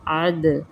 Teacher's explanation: عد عین کے ساتھ عد نہیں کرنا، عد، اور دال پر جزم قلقلہ ہوگا